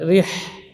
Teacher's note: Kemudian ra huruf takrir ya, ri di sini dibaca tipis karena kasrah. Getarannya juga 2 getaran